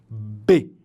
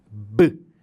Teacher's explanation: Eu preciso fazer essa oclusão com os meus lábios para permitir que o som saia.